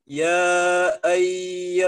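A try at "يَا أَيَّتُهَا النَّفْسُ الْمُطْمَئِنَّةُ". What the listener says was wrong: kurang panjang. ada baris bendera tuh.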